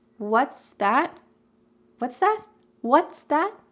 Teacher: Notice how I'm emphasizing both words.